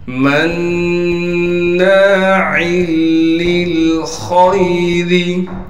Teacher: اب نون پر تشدید ہونے کی وجہ سے غنہ کریں گے، یعنی ناک میں آواز کو لے کر جائیں گے۔ پھر ناک میں آواز گر جانے کے بعد نون کے بعد الف حروف مدہ میں سے ہے، لہٰذا نون کو ایک الف کی مقدار کھینچیں گے۔